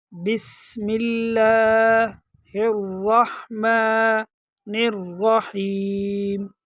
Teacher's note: سین میں سیٹی کی آواز نکالنی ہے